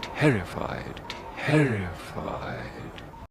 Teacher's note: Note all the te's. This sound is made with a tongue tip doing a light delicate tap on the gum ridge without a splash. In other words, do not bring in or color it with an s sound.